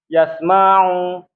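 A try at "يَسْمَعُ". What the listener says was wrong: Ma'u pendek.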